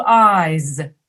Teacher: the consonant sound at the end is voiced